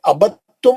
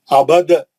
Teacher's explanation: جیسے یہ ابد تم ایک ہی کلمہ ہے، الگ الگ لکھا ہوا ہے لیکن ایک ہی ورڈ ہے یہ ابد تم. اب دال نہیں پڑھیں گے، دال ساکن کا تا میں ادغام ہو گیا. ابد دال نہیں پڑھیں گے، آپ دال پڑھ کے دال کا خلخلہ کر کے تا نہیں پڑھیں گے. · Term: ادغام متجانسین